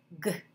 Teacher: it's like a k, only you turn on your sound. G.